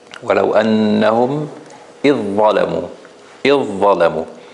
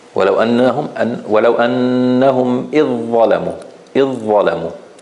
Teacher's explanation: And here, obviously, because the dhal is a soft letter and the dha is a much stronger letter, so there will be nothing left of the dhal. It's a complete merger.